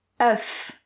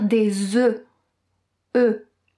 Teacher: Dans un oeuf c'est un e un peu ouvert. C'est le son [œ]. Alors que au pluriel c'est vrai le son change un peu et on a un e plus fermé